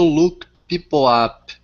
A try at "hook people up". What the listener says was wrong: Okay, so hook instead of look. Yeah, hook people up.